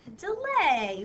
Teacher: you hear that long a sound right at the end